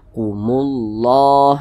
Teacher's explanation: huruf lamnya ini di sini kan tidak ada tanda bacanya, dia tidak dibaca, langsung masuk ke huruf yang di depannya. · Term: idgham syamsiyah